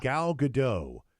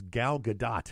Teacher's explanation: most people pronounce it with a silent T